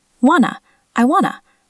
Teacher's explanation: This happens because the T sounds are reduced and combined into a soft N sound.